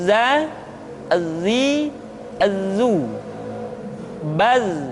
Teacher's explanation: ujung lidah kita berada di antara dua gigi seri bagian atas dan bagian bawah. Za menyerupai dengan pengucapan huruf Z di dalam huruf Latin. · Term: huruf za